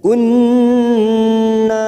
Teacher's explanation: Nun yang bertasdid gunnah musaddadah, 3 harokat kita tekan.